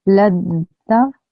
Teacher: I joined the lam with the dal. I ignored the ta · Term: Idgham kamil